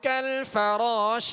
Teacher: را کو پر پڑھیں گے، را کے آگے الف مدہ ہے، ایک الف کی مقدار کھینچیں گے. کالفراشل شین پڑھیں گے.